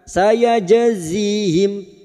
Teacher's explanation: Jim sukun yang mati asli dengan kalimat qalqalah sugro. Jangan lupa dipantulkan.